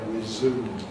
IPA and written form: rɪˈzuːm (resume)